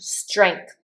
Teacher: I always say strength with a G that almost sounds like a C at [clears throat] the back of my throat.